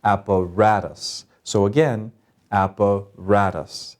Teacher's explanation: App, rat, us. So the third one gets the accent. That means we say it louder than the others.